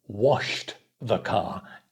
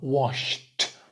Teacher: Ed ending, washed, with a t sound, because it's an unvoiced sh. No voice, so the ending is a unvoiced t.